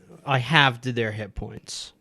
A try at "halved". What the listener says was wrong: the L and the D didn't quite come through.